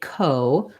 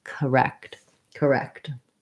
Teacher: it's tempting to say ko but we actually say that with a schwa because it's unstressed